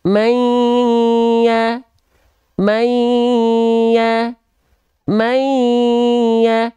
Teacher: rongga hidung ya Sekali lagi ya Sekali lagi ya dimasukkan dengan dengung May lalu ditahan dua harakat